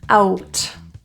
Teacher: It's a diphthong, 2 vowels. So we start with an open mouth, ow, and transition to rounding, ow, out. If.